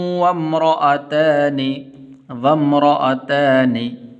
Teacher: یہ الف درمیان میں گر جائے گا اور واو میم کے ساتھ ملے گی، ایسے نہیں پڑھنا وَامْرَأَتَانِ، وام نہیں پڑھنا.